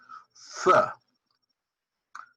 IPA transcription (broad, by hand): f